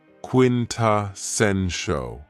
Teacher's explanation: this word has 4 syllables, and the stress is on the third syllable